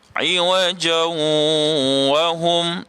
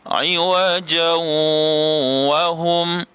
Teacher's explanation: Okey, asalnya ialah iwajan. Jim 2 di atas jan, maka kita tak boleh bunyi dengan jan. Kalau kita bunyikan dengan begini, iwajan wa hum, tak betul lah. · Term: idgham ma'al gunnah